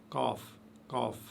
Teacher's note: Ensuite, vous avez les lettres, la lettre Qaf. La lettre Qaf, qui ressemble au K français. Et vous voyez qu'il s'articule, que cette lettre s'articule juste derrière la langue.